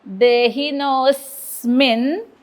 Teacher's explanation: आता स्मीवरती आघात कारण पुढे जोडाक्षर.